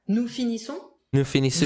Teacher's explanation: S is included in the plural. And then the typical O-N-S ending, nasal sound.